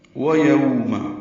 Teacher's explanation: وَيَوْمَ دونوں واؤں ہونٹوں کی نا تمام گلائی سے ادا ہوں گی. یو واؤ لین ہے، اس کو یاؤ نہیں پڑھنا.